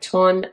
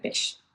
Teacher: long sounds like the S sound or the F sound are substituted with shorter sounds like the T sound or the B sound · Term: stopping of fricatives